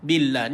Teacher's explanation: Billah tuan-tuan dibaca dengan kalimah Allah, dibaca dengan nipis.